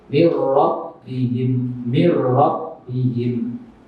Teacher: Jadi tulisannya min rabbihim, tapi karena ini ada nun sukun bertemu ra, maka nun sukun masuk ke ra tanpa berdengung